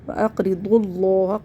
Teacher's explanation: ضاد کو تشدید والے لام سے ملا دیں گے